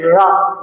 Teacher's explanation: वो भी मूर्धा से होता है। जैसे रा बोलेंगे तो जबान जो होगी आपकी थोड़ी पीछे जाएगी।